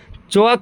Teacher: च और च वर्ग पूरा ये सब कहां से निकलता है? तालु से निकलता है।